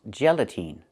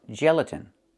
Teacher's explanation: The last syllable. The last vowel is not the long e like green beans. It's the short i like this is. It's more open. Not e but I gelatin.